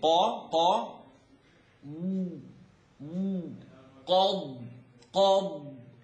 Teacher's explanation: qa is behind the uvula, that little dangly thing.